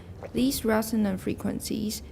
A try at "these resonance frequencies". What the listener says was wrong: These resonance frequencies. you read it the first time, I thought it was these resonant frequencies, which would be okay because then it would be a phrase, adjective plus noun.